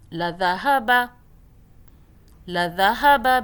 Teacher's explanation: دال کو سافٹ پڑھنا ہے، زبان کو باہر ہلکا سا کریں اور ادا کریں